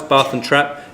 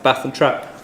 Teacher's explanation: in the south of the country, they're two separate vowels, Bath and trap. In the north of the country, they're the same vowel